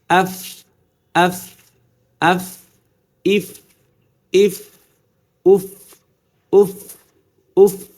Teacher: করছি এরকম কিন্তু এই যে উপরে এই যে দুই দাঁত না এই দাঁতের যে আগা এটাই নিচের ঠোঁটের পেটের সাথে লাগবে যে লাগছে কিন্তু আমি কি এভাবে চাপ দিয়ে ধরিনি কিন্তু হালকা